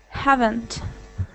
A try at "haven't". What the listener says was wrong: I think that the V's are like the main thing that you can work on. Because when you were reading, you said haven't. So, so you have to really, you're not really blowing as like when you do the F sound, like filthy, you're doing that, but you're not doing air.